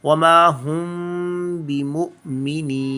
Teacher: میم کی آواز کو ناک میں چھپا کر غنہ ادا کریں گے 2 سے 3 سیکنڈ تک